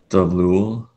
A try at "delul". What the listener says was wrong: Your beginning is slightly off. It's just delul. No, it's delul.